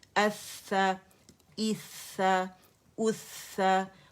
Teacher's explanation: جہاں پہ شدہ نہیں ہے میں نے وہاں آواز سٹاپ نہیں کی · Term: رخاوہ